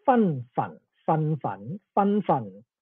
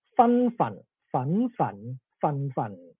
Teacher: the upper tones are slightly different between Pinghua and Cantonese, but the lower tones, they are similar enough